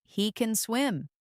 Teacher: The emphasis on swim is more neutral, simply stating his general ability.